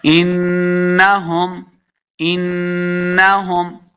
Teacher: یہ جو ہا اس کو حلق کے نچلے والے حصے سے ادا کریں گے